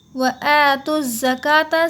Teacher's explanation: हम ता को मिलाएंगे ज़ा में क्योंकि ज़ा पे है तशदीद, तो ता को हमें यहाँ ज़ा में मिलाना होगा।